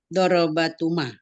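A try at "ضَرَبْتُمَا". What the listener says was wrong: Dorobtuma. Sukun juga lamnya.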